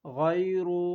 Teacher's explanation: غین یا زبر غی، را پیش رو، غیر، غین بھی موٹے حروف میں سے پر پڑھا جاتا ہے اور را بھی